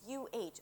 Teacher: So we ended up deciding that the schwa is going to be represented with UH, which is sort of the sound that you write when you want to indicate a sigh, or when someone's trying to think of what they have to say, right? It's this UH, a small sigh, which is practically the schwa